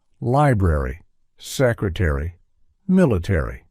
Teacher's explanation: a r y at the end of words is fully pronounced in American English